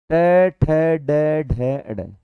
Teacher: इसका उच्चारण मूर्धा के स्पर्श द्वारा होता है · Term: ट वर्ग